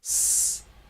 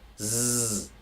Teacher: The vocal cords vibrate when you say z, so the z is voiced.